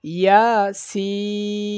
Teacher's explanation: সিনে ৪ আলিফ টান হবে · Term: মোটা চিহ্ন